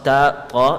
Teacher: This is when the tip of the tongue touches the gums of the central incisors. When it touches the gums of the thanaya ulya.